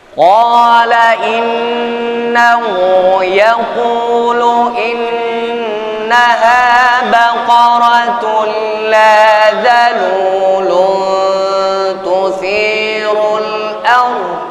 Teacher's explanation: Tuthirul arda ra kita baca dengan tebal mufakhamatir ra bitafkhimir ra'i, tebalkan huruf ra sukun, sebelumnya ada huruf hijaiyah yakni hamzah dengan harakat hidupnya yaitu baris atas.